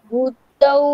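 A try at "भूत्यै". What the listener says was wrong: ভূতও নয় ত্যই ও পৈকারটা ভূত্যই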